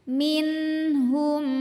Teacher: Nun mati kalau ketemunya sama huruf H, maka nunnya dibaca jelas, artinya nun tetap bunyi N. Tidak kita tahan, tidak kita putus suaranya ya.